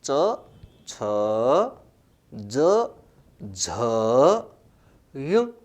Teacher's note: प्राणवायु मुख विवर में स्पर्श के साथ संघर्ष करती हुई बाहर आए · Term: स्पर्श संघर्षी वर्ण